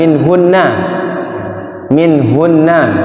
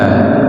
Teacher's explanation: Gunah musyaddadah dia itu mim dan nun yang bertasydid hukum bacaannya gunah musyaddadah